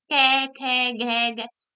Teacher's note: इसका उच्चारण स्थान क्या होता है कंठ होता है यानी इससे बोलते समय जो ध्वनि है वो कंठ से निकलती है जीभ हमारी वो कंठ को स्पर्श करती है